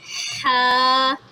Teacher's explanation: یہ ہا حلق کے درمیان سے نکلتا ہے